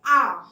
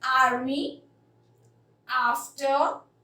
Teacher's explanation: आ बोलने में आपने देखा थोड़ा स्ट्रेच हो रहा है, आपका माउथ पूरा वाइड ओपन हो रहा है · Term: लॉन्ग वावल साउंड